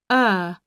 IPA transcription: ɜ: